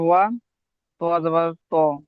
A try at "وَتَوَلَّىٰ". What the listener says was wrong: ত নয় ওটা, ওটা ত নেই, ওটা তা আছে।